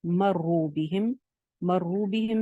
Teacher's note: مرو بہم میں بھی را کے اوپر پیش ہے اس لیے را موٹی ہے